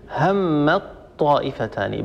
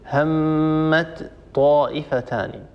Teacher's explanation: وجب ان ندغم التاء وهي الاولى الساكنه ان ندغمها في الطاء فنقول هم الطائفتان بدل ان نقول همت طائفتان همت طائفه لا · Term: ندغم التاء في الطاء